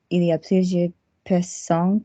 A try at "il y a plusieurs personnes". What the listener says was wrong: So can we link from plusieurs personnes and not have any pause? No, there was a micro pause. Plusieurs personnes. The R is going to connect to the P.